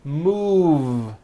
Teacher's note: Move has that voiced V sound.